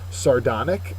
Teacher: Sardonic is an adjective. Second syllable is accented.